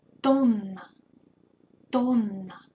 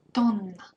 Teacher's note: Be sure to prolong N here, because it's double N, so we should prolong it.